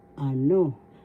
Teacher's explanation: the second syllable has the accent